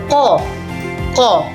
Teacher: dengan pangkal lidah bagian belakang menempel pada langit-langit mulut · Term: huruf qaf